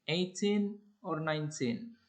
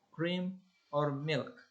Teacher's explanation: In the list of alternatives, the first items are spoken on high rising yes or no intonation, but the final item is on a falling intonation.